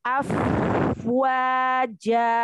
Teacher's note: Alirkan lagi hamasnya di huruf fa.